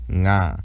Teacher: the voiced velar nasal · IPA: /ŋ/